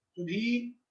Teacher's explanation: सुधी के ईकार को उच्चारण करने में तो द्विमात्रिक समय लगा